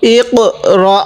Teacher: এই কপের মধ্যে একটু ধাক্কা দিব, কারণ কপটা হলো কলকলা হরফ